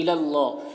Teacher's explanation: اللہ، یہاں پر اللہ مشدد حرف ہے تو پیچھے والے متحرک حرف لام سے مل کر پڑھا جائے گا، اور اللہ کے لام کو پر پڑھیں گے، کھڑا زبر ایک الف کے برابر کھینچیں گے